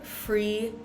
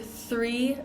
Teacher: one our tongue is in our mouth F and the other one our tongue is in between our teeth